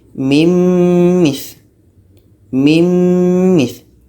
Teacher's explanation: Nun mati masuk kepada mim, jadi bunyi nun hilang. Yang tinggal bunyi mim. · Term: idgham